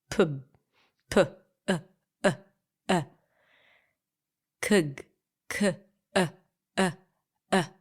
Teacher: that mini break, that mini vowel in between, is the schwa, a mini schwa.